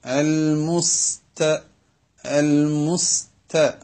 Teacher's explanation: മുസ്ത എന്ന് പറയുമ്പോൾ സീന് മുസ് എന്ന ശബ്ദത്തോടെയും ത നേർപ്പിച്ച് കാറ്റോടുകൂടെയും